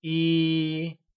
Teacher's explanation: One translates to Yī and is pronounced with a high level tone